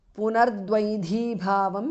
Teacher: Visarga changes to Repha